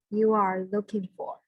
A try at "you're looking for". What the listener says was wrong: Okay, you are, it means you are, but if it's a comma, we don't pronounce the A. So you're looking for, it's one word, you're looking for.